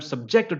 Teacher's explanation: I am subjected to pain. There the stress is on the second syllable, subjected.